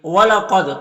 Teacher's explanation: قاف حروف مستعلیہ میں سے پر پڑھیں گے، دال میں قلقلہ ہوگا